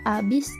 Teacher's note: adanya penghilangan fonem H yang seharusnya menjadi habis bukan abis